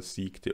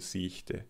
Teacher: Bei den meisten Sprecher*innen unterscheidet sich die Aussprache der Wörter siegte und siechte, das [k] wird durch das [ç] ersetzt.